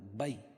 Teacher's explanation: یا ساکن سے پہلے زبر ہے اس لیے یا لین نرم آواز کے ساتھ جلدی پڑھیں گے